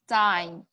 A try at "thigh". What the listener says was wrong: Thigh. No. Don't worry about, don't say any N's in there. We're just saying T-H, let's just say T-H-I. Thigh. Thigh.